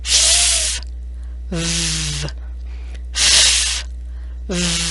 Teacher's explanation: These two sounds use the lower lip and teeth, and air is blown out over the lower lip like it is cooling the lip. Your upper teeth rest on your lower lip.